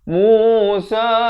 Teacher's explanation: Mu 2 harakat dan sa dibaca 4 atau 5 harakat.